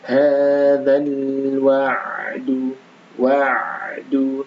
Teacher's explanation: huruf ain maka dialirkan sedikit karena huruf ain punya sifat yang namanya baini ya